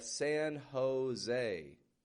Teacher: I'm not saying San Jose, but I'm making kind of an H sound. In Spanish, the J makes a H sound. And then the E on the end of the word is still getting this A. · It's actually more of an English sounding A, tense A sound.